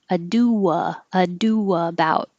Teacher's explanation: it's an intrusive W it's not invited it just shows up um because the rounded Ado and then the not rounded about · It's not invited, it just shows up because the rounded ado and then the not rounded about, ado about makes a W. So that will happen automatically if you're rounding your lips enough for the ado.